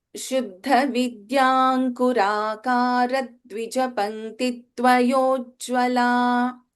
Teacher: This Ra should not be prolonged. It is a Hrasva. So you should take the next letter immediately after the Ra. You should not say Ra, it's not there.